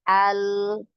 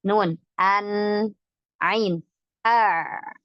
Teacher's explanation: bainiyah ini mengalir, tapi sedikit alirannya. Ya, tidak seperti rikhawah